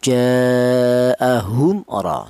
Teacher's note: bahwa huruf mim ini keluarnya huruf berasal dari kedua bibir ya dari bibir itu artinya syafawi. · Apa artinya idhar? Idhar itu artinya jelas. Yang mana yang dibaca jelas? Mem matinya dibaca jelas. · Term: izhar syafawi, idhar syafawi